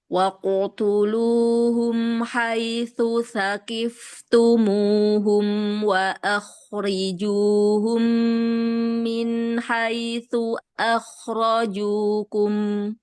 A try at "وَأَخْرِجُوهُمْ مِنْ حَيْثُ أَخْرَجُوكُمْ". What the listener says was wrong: Boleh diulang sedikit Ibu? Min haitsu akhrajukum. Tadi dari haitsunya agak kejeda sedikit ya. Min haitsu akhrajukum. Nah, sedikit dia jeda.